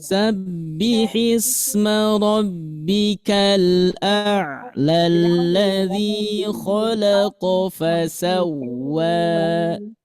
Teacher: dua harakat tandanya fathah bertemu alif bengkok nah tetapi ketika diwasol ketika disambung dengan ayat kedua maka la asalnya panjang menjadi pendek